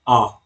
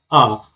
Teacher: विवृत में मुख द्वार क्या होता है? पूरा खुलता है। तो विवृत में आपका एक वर्ड आता है आ।